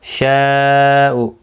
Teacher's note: یہاں پر مد متصل ہے، 4 الف کی مقدار کے برابر کھینچ کر پڑھیں گے